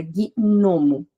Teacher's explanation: Gnomo tem 5 letras, e o G e o N são duas consoantes juntas e cada uma tem o seu som separado na palavra